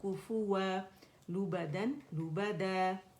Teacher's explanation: तो आप देख रहे हैं कि दो ज़बर की तनवीन फ़तहतैन कभी भी जो है वो साकिन में नहीं जाता, फ़तहतैन के साथ जब भी होता है तो वो क्या होता है, अलिफ मद्दा से बदल जाता है और दो काउंट के लिए आवाज़ ऊपर जाएगी